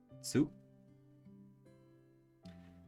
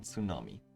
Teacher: Tsu, which adds an S sound and is pronounced with less emphasis on the T